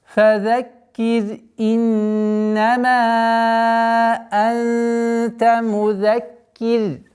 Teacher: Ра при остановке танвин аннулируется, переходит в сукун. И ра в данном случае мягкое произношение. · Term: ра мягкая